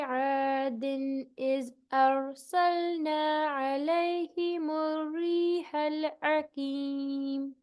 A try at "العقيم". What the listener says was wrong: آپ کو تھوڑا سا اور موٹا کر کے اقیم.